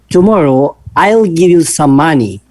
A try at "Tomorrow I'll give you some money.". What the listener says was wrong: Okay, but you stressed on I'll. There is no stress on you. You see the difference in the meaning. You read it as I'll give you some money. No, I'll give you some money. I'll give you some money. Do not stress on I'll.